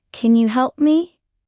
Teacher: Use a rising tone at the end. "Can you help me?" That shows you are asking a question.